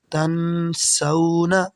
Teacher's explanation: یہاں پہ سین ہے حروف اخفا سے، تو یہاں پہ ہم غنہ کریں گے۔